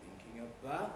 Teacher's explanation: You can probably hear that the pitch rises a lot more right at the end, actually, on about, thinking about, goes thinking about, and there's a kind of swoop up in pitch on about